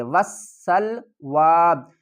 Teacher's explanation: واو کو سین سے ملائیں گے، سیٹی کی آواز آئے گی · ملائیں گے، سیٹی کی آواز آئے گی اور اس کے بعد ہم الف اور لام کو نہیں پڑھیں گے ۔ وَالسَّلْوَىٰ یا کو بھی نہیں پڑھیں گے، وقف کی صورت